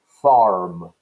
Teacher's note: Most Americans kept pronouncing the R in farm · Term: heavily roticized